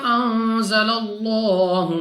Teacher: لام اف اللہ سے پہلے حرف پر زبر ہے تو اس لام اف اللہ کو پور یعنی موٹا پڑھیں گے منہ اور آواز کو کھول کر